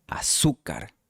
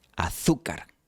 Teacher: En español americano, la Z de azúcar se pronuncia como una S, azúcar. Pero en España, la Z de azúcar suena como la TH de think en inglés, azúcar.